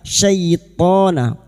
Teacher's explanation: syai fathah bertemu ya sukun kita lunakkan